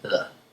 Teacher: Notice that the D in hedder is a soft D. It's not a hard D, so you wouldn't say header.